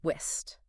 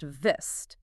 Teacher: so w is rounded lips and V is a little bit of lip biting action